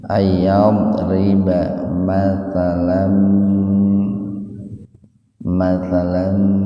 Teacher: Fathatain ketemu dengan mim, jadi alifnya diabaikan saja, langsung diidghamkan ke mim, dimasukkan ke mim dengan mendengung. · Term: idgham biguna